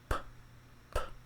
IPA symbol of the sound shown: p